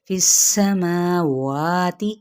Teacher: سین پہ سیٹی کو واضح کریں گے، فی السماوات، ان دونوں کو ایکولی کھینچیں گے، ما وا، ٹھیک ہے، ہونٹوں کی نا تمام گولائی سے ادا کرنا ہے۔